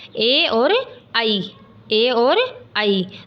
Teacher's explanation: तो ए का उच्चारण स्थान होता है कंठ और ई का उच्चारण स्थान होता है तालु। तो ए का उच्चारण स्थान क्या हो गया, कंठ तालु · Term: कंठ तालव्य